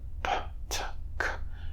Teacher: you'll often hear a puff of air or aspiration after the release before the vowel starts. This aspiration is generated by air passing through the glottis and vocal tract after the closure release and can even persist after voicing begins.